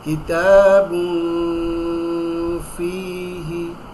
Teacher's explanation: গুন্না করে উচ্চারণ করি নাকের ভিতরে লুকিয়ে